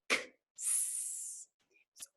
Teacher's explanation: if you really kind of slow it down, X. almost like you hear a K and an S. X actually makes two sounds. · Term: X sound